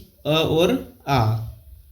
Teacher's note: अ और आ वर्ण कंठ से उच्चारित होने वाले वर्ण है